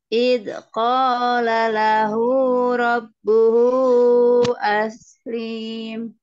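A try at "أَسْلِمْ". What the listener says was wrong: Aslim. Tidak ada tanda panjang. Aslim. Aslim.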